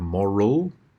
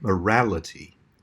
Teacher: you can have moral, where the A becomes a schwa, but then morality, where there's that normal short A sound